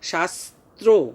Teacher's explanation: শাস্ত্র বললে কিন্তু ভুল হবে, শাস্ত্র, ওকার, ওকারের মতো উচ্চারণ করতে হবে, ঠোঁটটা গোল হয়ে যাবে